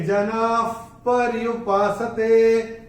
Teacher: दूसरे चरण में ना के बाद जो विसर्ग आ रहा है उसके बाद का अक्षर है प, और विसर्ग के बाद प या फ आता है तो विसर्ग का उच्चारण होता है फ। जैसे फूंक मारते हैं ना वैसा फ।